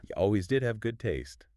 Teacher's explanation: Stressing that did confirms the truth of the statement in a really strong, positive way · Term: emphasis stress, Emphasis, stress